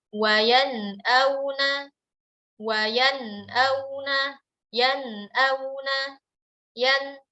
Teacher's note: Jelas bunyi nunnya tanpa kita beri tambahan gunnah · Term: izhar